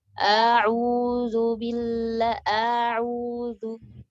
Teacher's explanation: Anti telah memanjangkan hamzah ini